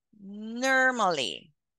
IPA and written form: ˈnɔːr.mə.li (normally)